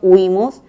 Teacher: es una palabra grave con acento en la penúltima sílaba